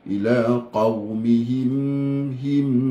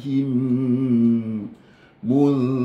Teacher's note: maksudnya mim dengan mim yang kedua itu yang keluar daripada syafatain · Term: idgham syafawi